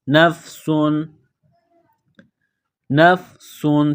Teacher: سین میں سیٹی کی آواز، سین کو باریک کرنا ہے